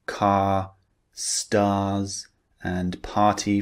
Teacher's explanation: the R sound in these words is unpronounced. Okay, we do not pronounce the R sound.